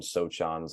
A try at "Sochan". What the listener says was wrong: Nope, that's not how you say that. The C is silent. It's Sohan. Sohan.